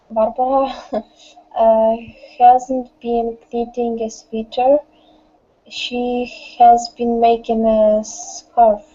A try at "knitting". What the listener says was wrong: Knit. K is not pronounced. Knitting